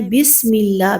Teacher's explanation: بسم اللہ میں سین میں سیٹی کی آواز ہوگی اور اللہ کے نام کو باریک پڑھنا ہے